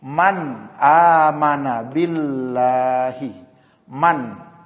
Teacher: nun mati atau tanwin ini dibaca dengan jelas atau tegas, tanpa dengung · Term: izhar